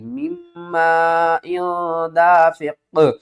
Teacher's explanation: نون کو اب ہم نے نہیں پڑھنا، نون ختم ہو جائے گی، میم کے ساتھ میم مل جائے گی ، مم دافق، یعنی کہ یہاں پر قاف ساکن ہو جائے